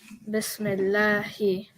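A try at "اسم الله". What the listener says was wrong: Actually, it's Ismillahi. B is a separate word we'll learn about later. But so I'll make it ism. Ismillahi.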